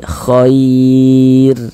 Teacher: Kalau ada huruf ro sukun yang sebelumnya ada huruf ya sukun ya, berarti huruf ro sukunnya dibaca tipis, dibaca tarkik. Khair. Nah, tipis begitu.